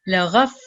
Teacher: letter fa has a shadda, so we're going to make 2 fa sounds, and then alif haruf madda, so make the sound for 2 seconds.